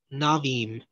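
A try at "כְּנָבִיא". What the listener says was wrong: The far as your pronunciation, this is a Shawa, so I mean, don't hit it so hard. It's just kenavi, or something like that.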